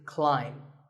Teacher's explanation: the AI is an I sound not an a sound so the word is climb